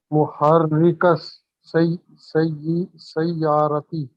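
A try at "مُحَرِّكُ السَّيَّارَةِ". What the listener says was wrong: काफ पे आप जबर क्यों इस्तेमाल कर रहे हैं? मुहर्रिकुस होगा ना, तनवीन खत्म होगा लेकिन दो पेश ही रहेगा ना।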